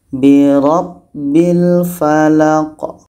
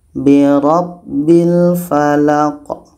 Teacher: Q mati di akhir itu Qalqalah kita pantulkan maka kalau kita berhenti kita pantulkan dulu huruf Qalqalah ini kita